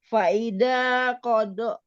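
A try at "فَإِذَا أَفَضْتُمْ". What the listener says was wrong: Di sini ada benderanya, jadi enggaknya panjang. A-nya Bu, A-nya kurang dibaca.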